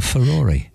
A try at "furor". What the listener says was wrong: But you said furore. Britain.